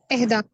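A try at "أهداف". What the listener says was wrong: एहदाफ नहीं होता, अहदाफ हमेशा जमा पे जबर हुआ करती है। अहदाफ, अतफाल, इस तरह का ना जमा हुआ करती है।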